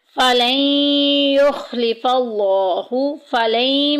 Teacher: فَلَن يُخْلِفَ اللَّهُ، فَلَن میں دیکھیں نون ساکن کے بعد یا آ گیا جو کہ یرملون کے خاندان میں سے ہے، یعنی کہ ادغام کے خاندان میں مدغم کر دیں گے، ملا دیں گے